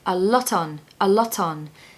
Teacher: make sure you pronounce the T on the end of lot because it will allow you to blend that word into the next one so a loton it should sound like a lot on a